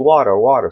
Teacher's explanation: Nesse caso aqui, entre duas vogais, o T tem som de R da aranha.